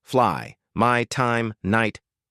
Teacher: AI, as in fly. Start wide open, jaw drops for A, then glide upward toward I, feel the jaw rising.